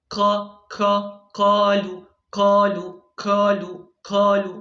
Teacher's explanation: dia baca q ya memiliki udara ketika mengucapkannya